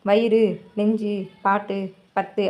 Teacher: ரூ அப்படின்னு மட்டும் தனியாக சொல்லும்போது, இதே இது வயிறு அப்படின்னு சொல்லும்போது ரு அப்படின்னு சொல்லி ஷார்ட்டாக சொல்கிற மாதிரி இருக்குது. வயிறு அப்படின்னு சொல்லி சொல்ல மாட்டோம், வயிறு அப்படி தான் சொல்கிறோம். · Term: குற்றியல் உகரம்